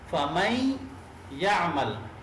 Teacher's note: ठीक है, फमई या अमल, मई, ये देखिए मई, यहाँ पे जो हम रुक रहे हैं, ये जो आपस में मिला रहे हैं, इसको मिलाते वक्त ये गुन्ना भी साथ हो रहा है, तो ये इदगाम माल गुन्ना है।